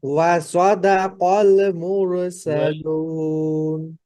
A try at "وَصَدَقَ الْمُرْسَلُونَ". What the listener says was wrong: অবশ্যই অবশ্যই আপনাকে লাম সুকুন হরফ ধরতে হবে। কলমুর, কলমুর, হ্যাঁ, ওয়াসাদাকাল মুর, খেয়াল করবেন।